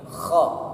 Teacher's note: Dalam penyebutan huruf kha tidak boleh kita menyebutnya dengan ho. Itu usahakan ada semacam huruf K yang kita keluarkan seperti ini. Kha. Tidak boleh kita menyebutnya ho.